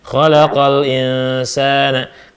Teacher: Nah, itu mad tabi'i ya. Mad panjang ya, mad tabi'i sebab sin fathah kalau ada alif. Ya, tidak bertemu hamzah, tidak ketemu sukun.